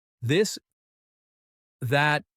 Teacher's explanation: Feel your throat buzzing, that's voiced th.